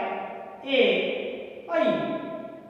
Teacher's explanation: उसके पश्चात है ए ऐ, कंठ तालु, कंठ और तालु के द्वारा इसका प्रयोग होता है, इसको कंठ तालु भी कहा जाता है।